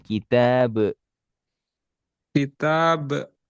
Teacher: Jangan ditahan langsung qalqalahkan.